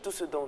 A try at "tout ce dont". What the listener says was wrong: Non, le T, il est muet.